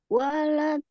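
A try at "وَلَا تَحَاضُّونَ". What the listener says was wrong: La. Lanya 2 harakat, Ibu. Wala taha. Taha. Taha Bu. Ini memang agak nempel nih apa? Harokatnya agak nempel. Wala taha. 2 harakat. 2 harakat. Walanya agak coba.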